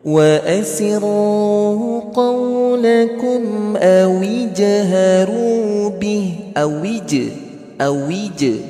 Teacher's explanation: huruf jimnya punya sifat qalqalah